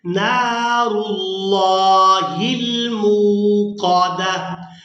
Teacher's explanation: लेकिन लफ्ज़ अल्लाह का लाम तब पूरा अदा किया जाता है, यानी मोटा पड़ा जाता है, जब उससे पहले वाले हरफ के ऊपर ज़बर या फिर पेश होगी तो लफ्ज़ अल्लाह का लाम पूरा अदा होगा। तो यहाँ पर लफ्ज़ अल्लाह के लाम को पूर्ण पढ़ेंगे, यानी मोटा अदा करेंगे।